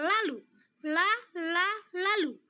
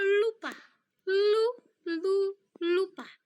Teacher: Nah, selanjutnya di sini saya akan memberikan contoh kata lateral apabila huruf L berada di depan kata, yaitu pada kata lampu yang dihasilkan ketika ujung lidah menyentuh gusi gigi bagian belakang atau langit-langit mulut, dan udara mengalir keluar melalui sisi lidah